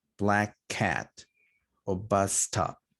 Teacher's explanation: you just elongate the consonant a little bit more